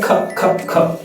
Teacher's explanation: সি এর সাউন্ডে খ খ খ, এটাকে কোনো মতেই নন অ্যাসপিরেটেড করা যাবে না